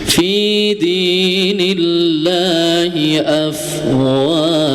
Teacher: pada lafadz Allah yang di ayat ini dibacanya tipis ya